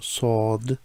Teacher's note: the Sod is more rounded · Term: round mouth